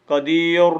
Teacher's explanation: ما قبل یا ساکن ہے تو را کو بریک پڑیں گے